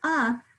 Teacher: i don't hear a short a in that first syllable i hear a schwa